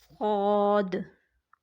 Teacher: تو مکمل تب ادا ہوگا جب ہم اسے سیٹی کی آواز کے ساتھ پڑھیں گے، مکمل طور پر صاد۔